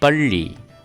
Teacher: 2 dots below the alphabet's L. So the Li here is to be pronounced with your tongue touching the roof of the mouth. So it is pronounced as Palli.